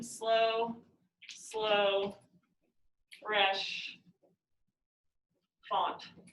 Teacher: i can't hear any unstressed syllables in that slow slow fresh font